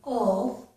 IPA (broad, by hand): əl